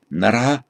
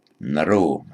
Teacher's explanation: where you get a Sanskrit word ending in a, that becomes an o in Pali